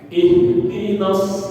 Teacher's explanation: ihdina itu ada panjang, tapi nggak usah dibaca panjang. Kenapa? Karena mad tabi'i ketika bertemu dengan alif lam dia kalah.